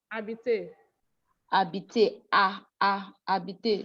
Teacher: Don't sound H. You don't go ha. No ha inside.